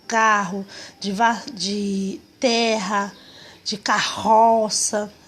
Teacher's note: Os dígrafos que nós vamos separar são os RRs, de carro, de terra, de carroça, né? Aquele som que faz com a garganta, são os RRs.